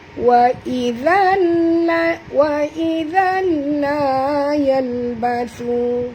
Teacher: tanwin bertemu dengan lam masuk tanpa dengung, idgham bila guna. Wa izal la yalbathu, la dua harakat, yalbathu, thu di sini dua harakat, sebut betul-betul bathu, thu ya, bukan basu tapi bathu, sentil lidah ya.